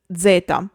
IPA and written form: ˈʣɛta (zeta)